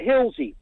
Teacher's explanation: But Hillsey, near the hill, you can put a Z in it. Well, that's because the S sound comes at the end of the letter, at the end of the word, not the beginning of it.